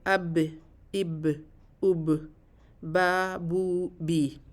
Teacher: ہم دونوں ہونٹوں کو جلدی الگ کر دیتے ہیں ایک دوسرے سے، اب اب اب، اور اس کی ادائیگی میں منہ سے ہوا نہیں نکلتی. تو اس کی ادائیگی کی یہ 3 کریکٹرسٹکس ہیں کہ جب ہم جب ہونٹوں کو ملا لیتے ہیں تو فوراً پھر الگ کر لیتے ہیں، اب اب، اور اس وقت اس کی ادائیگی میں منہ سے ہوا بھی نہیں نکلتی.